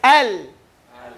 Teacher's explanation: The makhraj for ra is at the front, with the tip of the tongue. So when we say al, it goes away from the makhraj of lam and goes towards the makhraj of ra. So you say al, and you feel your tongue roll, al. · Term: Inhiraf